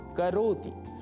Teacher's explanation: करोति के त में जो ह्रस्व ई है उसको दीर्घ नहीं करना है। करोति यह नहीं बोलना है।